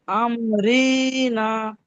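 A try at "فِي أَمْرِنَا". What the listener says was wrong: রি টান হয়ে যাচ্ছে কেন? রি টান হবে না তো, রির নিচে জের আছে। ফি আমরিনা।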